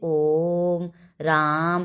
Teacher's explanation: उसके बाद हम देखते हैं प्लुत स्वर या त्रिमात्रिक स्वर, जिनके उच्चारण में ह्रस्व का 3 गुना या सबसे अधिक समय लगे, उन्हें हम प्लुत स्वर कहते हैं।